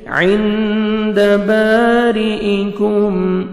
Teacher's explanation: عین کو اپنے صحیح مخرج سے پڑھیں گے، اور نون ساکن کے بعد 15 لیٹرز میں سے دال ہے، نوز میں ساؤنڈ لے کے جائیں گے